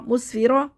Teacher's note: پڑھیں گے مس، فا زیر فی، مسفی، را زبر را، مسفیرا، را کو موٹا پڑھیں گے کیونکہ را کے اوپر زبر ہے